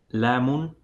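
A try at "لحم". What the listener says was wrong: Nice, but pronounce the you're skipping the ha. You're saying lamun, lamun. It should be. So what vowels on the ha?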